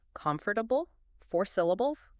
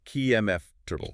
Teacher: That middle bit, the fort, it just kind of melts away. We're aiming for flow, not super strict enunciation of every single sound.